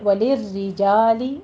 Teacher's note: را تشدید والی ہے، کسرہ کی تشدید ہے، یہاں پہ باریک پڑھی جائے گی